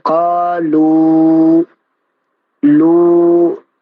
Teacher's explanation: واو کی آواز جو ہے ہوا پہ تمام ہو رہی ہے